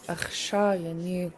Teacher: This is a long high A.